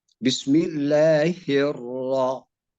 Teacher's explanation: Nah sekarang khusus pada Ar-Rahman mengenai sama-sama tetap sama terkait dengan diperlunak tasydid itu sehingga ro tidak akan terbaca dua kali takrirnya